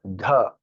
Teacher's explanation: It is not the, it is dha. Air has to come out, it is Mahapran.